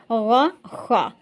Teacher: درمیانی حلق سے تھوڑا اوپر سے ادا کرنا ہے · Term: حلق کے حروف